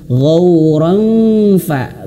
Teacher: bibirnya sudah menyentuh ke huruf fa dan ditahan dua harakat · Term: ikhfa